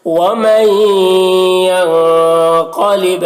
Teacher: نون ساکن کے بعد یا ہے حروف یومن میں سے، تو نون کو یا سے ملا کر غنہ کے ساتھ پڑھیں گے، اس کو ادغام ناقص کہتے ہیں۔